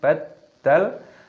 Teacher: dalnya ini berharokat tasydid maka dimasukkan, diidghamkan, ditekan